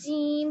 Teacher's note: जीम का मखरज जुबान का दरमियानी हिस्सा ऊपर तालु को लगेगा।